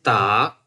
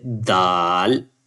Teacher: Dal is like when you pronounce kind of ta sound, but little bit up. When you touch the tip of your tongue with upper front teeth, the back side of the teeth, you say ta, but when you touch it a little bit up side of the teeth, you can pronounce dal. Dal, not exact the tip, a little bit inside of the tongue.